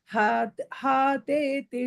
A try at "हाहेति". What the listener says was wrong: ஹாதேதி இல்ல ஹாஹேதி.